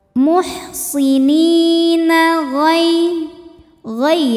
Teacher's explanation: Sebab ada ya sukun didahului baris fathah, maka dibacanya lembut. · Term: huruf lin